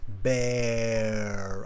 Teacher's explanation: i open my mouth into a more of a round shape so i'm over articulating